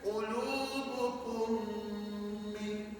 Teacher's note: Mim mati jumpa mim sabdu itulah idgham syafawi.